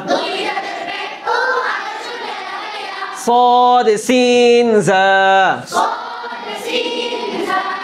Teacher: জিহ্বার আগা সামনের নিচে 2 দাঁতের পেট ও আগার সঙ্গে লাগায়া সদ সিন জা